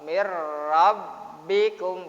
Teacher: Non mati berjumpa dengan ra dibaca idgham bilahun guna. Nonnya tidak non matinya tidak dibaca, ra-nya yang dibaca. Dilebur ke ra. Mir rabbikum gitu ya caranya.